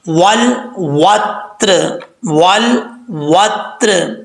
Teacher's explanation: लाम भी साकिन है, लाम को पढ़ते वक्त कलकला नहीं आना चाहिए।